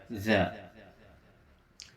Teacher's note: za ini memiliki sifat jahr. Jahr dalam arti ketika membacanya tidak ada hembusan napas yang keluar. Lalu yang kedua, za ini memiliki sifat rokhawah, yaitu dilonggarkan cara membacanya, tidak ditekan. · Za ini makharijul hurufnya berada pada ujung lisan yang ditempelkan pada ujung gigi seri yang atas.